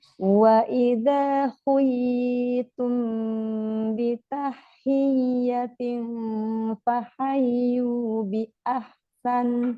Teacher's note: cuman mim ketemu ba itu udah dengung